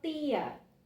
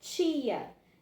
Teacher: a gente tem uma variação entre os fonemas t e o fonema ch